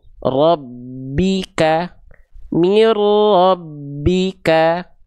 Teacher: Idgam leburkan bila tanpa disertai gunah dengung. Nah, maka bunyi n ini dimasukkan ke dalam huruf ro tanpa adanya dengung. Alias tanpa dengung itu suaranya enggak perlu sengau masuk hidung dan enggak perlu dita ditahan.